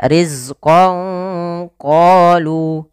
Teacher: samarkanlah suara nunnya kepada huruf qaf